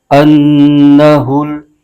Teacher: نون مشدد کو حمزہ کے ساتھ ملا کر پڑھیں گے اور نون مشدد میں ہمیشہ غنہ ہوتا ہے ، نون مشدد پر زبر ہے، اس کو بغیر کھینچے پڑھیں